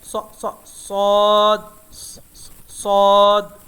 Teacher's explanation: اور صاد حروف مستعلیہ میں سے بھی ہے، ہیوی بھی ہے.